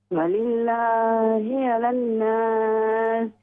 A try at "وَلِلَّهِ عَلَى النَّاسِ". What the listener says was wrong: غنہ کریں. نون مشدد ہے، اس میں غنہ کریں. وَلِلَّهِ عَلَى النَّاسِ. عَلَى النَّاسِ.